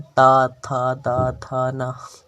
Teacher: और ता वर्ग में ता था दा धा ना, इसे हम दंत बोलते हैं।